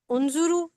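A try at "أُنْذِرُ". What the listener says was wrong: बस ये जे में जेर आएगा। सिर्फ ये जेर का मसला आ रहा था। ठीक है, वो पेश हो गया।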